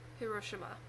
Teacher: apparently there is no emphasized syllable if you're pronouncing it correctly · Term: all the same emphasis